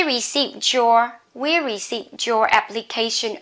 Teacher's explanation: D and Y together you can pronounce as J